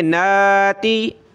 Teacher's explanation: نون پہ کھڑا زبر ایک الف کی لمٹ میں کھینچیں گے